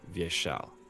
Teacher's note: So with this, it's vie, yeah. And also in Vyeshal, the second syllable is always the emphasis